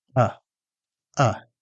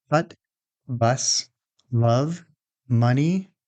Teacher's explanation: This is a central relaxed vowel. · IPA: /ʌ/